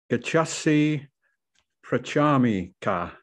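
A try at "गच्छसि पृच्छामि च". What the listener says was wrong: The ka, remember the C always represents the ch sound. It says gachasi prachami cha.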